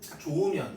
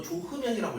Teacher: 발음을 할 때 히읗이 탈락한다라고 해서 히읗 탈락이야